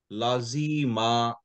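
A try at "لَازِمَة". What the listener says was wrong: লা তে একটা টান হবে তাই না লা এরপরে একটা আলিফ আছে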